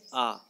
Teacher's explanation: मुख पूरी तरह खुलता है या सबसे अधिक खुलता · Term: विवृत